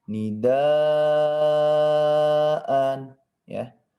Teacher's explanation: Kemudian di sini perlu diperhatikan ini adalah mad wajib muttasil ya. Panjangnya sebanyak 4 sampai 5 harokat atau ketukan ya. Nidaan ya. Boleh 4, boleh 5.